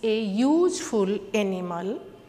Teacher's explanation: The word useful also starts with letter U. Letter U is a vowel, but in this sentence, in this word, useful pronounced like as a consonant Y.